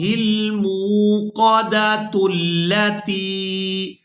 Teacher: اگر ہم یہاں پر وقف نہیں کرتے تو پھر ہم نے تا کو لام مشدد کے ساتھ ملا کر ادا کرنا ہے